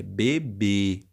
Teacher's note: forte a tônica é o b o último beré bebê então nós temos o som forte ali no último b só que ele é um som fechado né porque se eu falasse com som aberto eu teria que